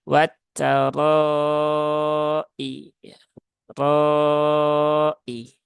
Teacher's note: r-nya berbaris fathah maka dia ditebalkan dan dipanjangkan sesuai kadar mad wajib muttasil yaitu empat atau lima harakat